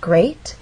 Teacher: That means this is the point where our voice will go up. Great has one syllable, so we only have one syllable to make our voice glide up. Great. And we're using rising intonation because this question requires a yes or no answer.